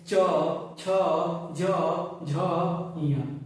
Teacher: तो च वर्ग के जितने वर्ण है सभी तालु की सहायता से बोले जाएंगे। जब भी आप च वर्ग के वर्णों का उच्चारण करेंगे तो जीभ जो है तालु में जाकर सटेगी। · च वर्ग के जितने वर्ण है व सभी तालू की सहायता से बोले जाएंगे